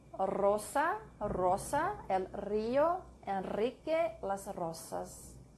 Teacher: The R at the beginning of a word or after L, N, or S is trilled